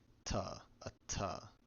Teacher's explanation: usually something around voiceless alveolar plosive or a voiceless dental plosive